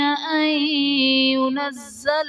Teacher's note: ما يود الذين كفروا من أهل الكتاب ولا المشركين أن ينزل عليكم من خير من ربكم ان ينزل میں نون ساکن کے بعد حروف جرملون میں سے یا آ رہا ہے تو یہاں پر ادغام مع الغنہ کا قاعدہ ہوگا، یعنی نون ساکن میں ہم غنہ کر کے پڑھیں گے